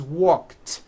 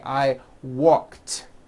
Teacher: ed ending it's just pronounced as a t jump like that the word walk which has an unvoiced k sound at the end